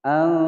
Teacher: nun sukun atau nun mati bertemu dengan huruf fa, disamarkan kemudian didengungkan selama 2 ketukan. Hukum bacaan ikhfa ausat ya.